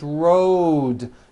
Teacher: Road also has a voiced D ending. Road. It's not wrote, unvoiced, it's road.